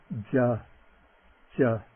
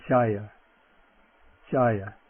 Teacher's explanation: Cha. Okay, the J, the palatal voiced J, non-aspirate